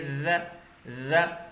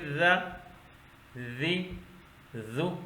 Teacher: ذال باریک لفظ ہے، زبان کا سرا، اوپر کے 2 دانت آپس میں مل جائیں تو یہ لفظ ادا ہوتا ہے۔